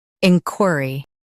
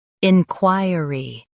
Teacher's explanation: In US, stress in. In UK, stress qui.